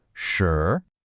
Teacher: it's got that clear rising tone